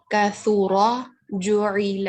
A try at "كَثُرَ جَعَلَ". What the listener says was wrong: آپ کا زبر بیٹا اور چھوٹا کیجئے